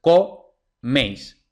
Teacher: es diptongo y luego en la división silábica es co meis meis es la última sílaba que es tónica entonces la palabra es aguda